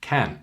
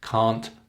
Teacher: Can you hear the difference in length? Can short can't long